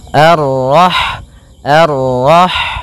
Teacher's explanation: sifat ha itu yang paling mencolok adalah sifat hamesnya, yaitu mengalirnya nafas ketika kita membacanya.